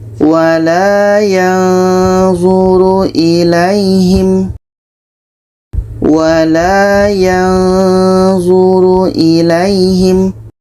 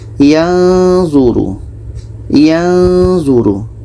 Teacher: Dengung lebih kurang 2 harakat.